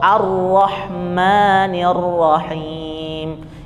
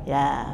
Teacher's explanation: Untuk huruf ro setiap fathah itu dia tebal. Contoh Ar-Rahmanir Rahim, itu ro-nya yang bertasydid itu kan fathah, ya.